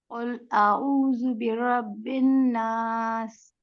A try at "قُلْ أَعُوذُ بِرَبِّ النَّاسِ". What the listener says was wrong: ہاں، آپ نے خیال رکھنا ہے کہ اعوذ پہ وہاں پہ سیٹی نہیں ہونی چاہیے۔ اعوذ، اعوذ جیسے یہ کر رہے ہیں آپ نے ویسے ہی کرنا ہے، ٹھیک ہے؟